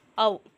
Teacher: அவகாரம் தனித்து வரும்பொழுது தன்னுடைய மாத்திரை அளவிலிருந்து குறையாமல் ஒலிக்கும்